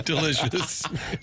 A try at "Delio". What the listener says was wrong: You did. Delio. Yeah, there's no C in there.